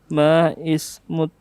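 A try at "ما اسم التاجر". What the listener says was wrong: Itu digabung langsung, alifnya tidak dibaca, hamzah wasal. Bukan ma ismuka tapi mas muka. Masmut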